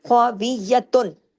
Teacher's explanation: واو اور یا ایک ایک حرکت، اور تا دو پیش تن پورے اظہار کے ساتھ